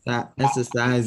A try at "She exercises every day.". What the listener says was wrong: Exercises. Remember, it has an S, so we have to hear that second syllable. She exercises every day.